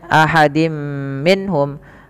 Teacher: tanwinnya dimasukkan ke huruf mim dan ditahan Dan inilah yang kita kenal dengan bacaan Idam bunah yaitu am